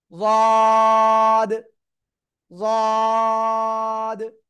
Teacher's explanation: জিহ্বার গোড়ার কিনারা উপরে মাড়ির দাঁতে গোড়ার সাথে লাগিয়ে উচ্চারণ করতে হবে। 1 2 3 আলিফ টেনে পড়বো।